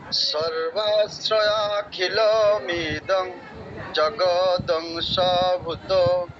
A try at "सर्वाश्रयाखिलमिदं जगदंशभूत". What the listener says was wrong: ওটা অনুষ্টুপ ছন্দ, ওভাবে পড়লে হবে না। আমি যেভাবে পড়ছি সেভাবে, আমি যেই লাইনটা পড়েছি সেটা পড়ুন। सर्वाश्रयाखिलमिदं जगदंशभूत। ঠিক আছে, অডিওগুলো শুনে শুনে প্র্যাকটিস করবেন, কারণ আপনি অনুষ্টুপ ছন্দের সাথে কিন্তু মানে উল্টোপাল্টা করে ফেলছেন, মিলিয়ে ফেলছেন। এটা অনুষ্টুপ ছন্দ নয়, এটা একটা সম্পূর্ণ আলাদা শাকওয়ারি ছন্দ।